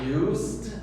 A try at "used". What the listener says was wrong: More Z, completamente Z, nada de S.